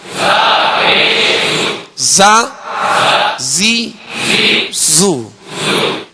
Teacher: زا زی زو یعنی اس میں زیادہ جو ہے وہ زا زی اس قدر جو ہے وہ اس کے اندر سختی کہ جس میں تکلف پیدا ہو یہ درست نہیں ہے. بس آواز جو ہے اس کی سخت ہو، سیٹی جیسی آواز نکلے اور جو ہے آسانی کے ساتھ نکلے